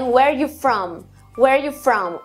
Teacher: o are praticamente some fica praticamente só where you from na fala contina do do do fica lá embaixo e como